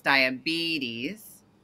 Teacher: diabetes has a major stress on the first E. So it's diabetes.